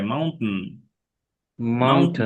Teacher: মাউন্টেন একদম নাকে রেখে দাও, এরকম নেটিভরা এরকম প্রায় করে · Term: ইট আপ দা ভাওয়েল